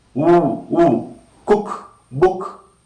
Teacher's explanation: Alright, oo, rounded. So back, above half closed position, rounded, short sound